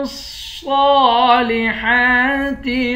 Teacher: آمنوا وعملوا الصالحات، لام کو صاد کے ساتھ ملا کر پڑھیں گے، صاد پر کھڑا زبر ہے، صاد کو موٹا بھی پڑھیں گے، ایک الف کے مقدار بھی کھینچیں گے